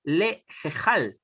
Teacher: la pronunciación correcta es lejejal, porque tenemos una sere yud que se pronuncia como una e